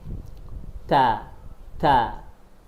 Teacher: Ya, ujung lidah berada di gigi seri ee gigi seri atas bagian dalam. Gigi seri atas ini gigi seri atas bagian dalamnya. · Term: huruf ta